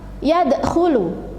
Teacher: Jadi huruf qalqalahnya itu adalah dal yang bersukun di tengah kata. Jadi membacanya harus memantul. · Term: qalqalah sughra